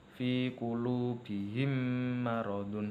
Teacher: posisi bibir ketika membaca idgham mimi dalam kondisi tertutup dan sedikit bergetar